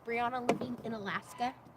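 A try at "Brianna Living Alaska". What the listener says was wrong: Living Alaska. Not in.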